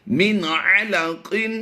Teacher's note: اظہار کرنا ہے، یعنی ظاہر کر کے پڑھنا ہے، اسے غنہ نہیں کرنا۔